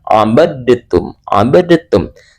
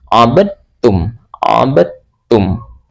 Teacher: maka cara membacanya dalnya dihilangkan langsung dimasukkan ke dalam huruf ta. Jadi, abadum abadum. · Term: idgham mutajanisain